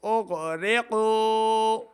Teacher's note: حمزہ کو غائن کے ساتھ ملا کے پڑھیں گے, غائن کو موٹا پڑھنا ہے